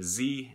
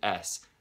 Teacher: you should be able to feel a little vibration z and the only difference between the z and the s is that s is voiceless so when you pronounce an s you should feel nothing right